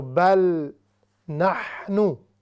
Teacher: نحنو یعنی اس کو ہم نے ہا بالکل نہیں بنانی، وہ پھر لحن جلی بڑی غلطی ہو جائے گی.